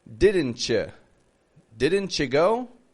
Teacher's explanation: We connect this, we blend this with the words you or your, and we make it sound like a chew or a ch. Now, this is very commonly done in spoken English.